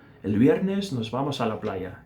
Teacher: o V sendo pronunciado como se eu estivesse fazendo uma menção de tocar os meus lábios, mas eles não se tocam.